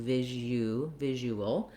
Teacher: it ends with a dark l with a schwa sound before it because i'm moving from the uh the rounded sound to the